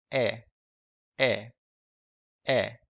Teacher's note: the sound seems to be produced more around the front part of your mouth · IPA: ɛ